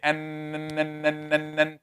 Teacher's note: tip of the tongue, touching behind the upper teeth at the gum